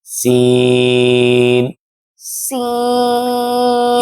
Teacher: زبان کی نوک اور دونوں دانتوں کے اندرونی کنارہ سے ادا ہوتا ہے۔ اور اس کی ادائیگی کے لیے دیکھیں نا ہم نے دانت آپس میں لگانے ہیں اور زبان کی نوک ان دونوں دانتوں کے درمیان میں لگے گی، یعنی دونوں دانتوں کے کنارے کے درمیان لگے گی، تو پھر آہستہ آہستہ سے برابر لگا کے کھول دیں گے۔